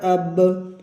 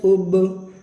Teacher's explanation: बा के ऊपर जो जज़म है इसको पढ़ते वक्त बा की आवाज़ जो है वो टकरा रही है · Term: कलकला